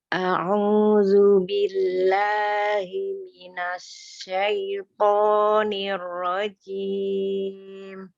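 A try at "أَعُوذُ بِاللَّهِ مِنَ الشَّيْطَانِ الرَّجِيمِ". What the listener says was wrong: Ya, pengucapan huruf zal ya, tidak tertukar ke huruf zai. Huruf zalnya ujung lidahnya ada di ujung gigi seri atas. Lu bukan zu. Bedanya kalau kita mengucapkannya dengan huruf zai maka ada udara yang mengalir zu. Tapi zal jahar ya, jelas tidak ada udara yang mengalir. A'udzu bukan a'uzu.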